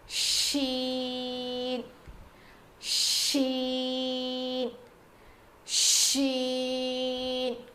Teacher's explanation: زبان کی نوک کو زبان کی نوک نہیں, زبان کے بیچ کے حصے سے شین ادا ہوتا ہے